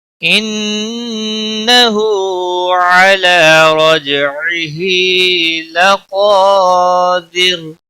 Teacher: انہ نون مشدد پر غنہ ہوگا، ہا کے اوپر الٹا پیش ہے، 1 الف کے برابر کھینچ کر پڑھیں گے۔